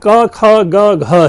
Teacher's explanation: ख और घ में ज्यादा हमें हवा निकालना होता है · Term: महाप्राण